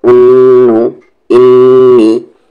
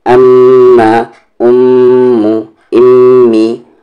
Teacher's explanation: जब नून पर तशदीद आए या मीम पर तशदीद आए तो वहाँ पर गुन्ना करेंगे, आवाज़ को नाक में थोड़ी देर रखेंगे